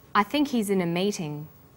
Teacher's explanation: The word think is stressed in this sentence and he's is unstressed